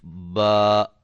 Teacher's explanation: अब ये अलिफ मद्दा है, इसको एक अलिफ की मिकदार के बराबर लंबा करेंगे।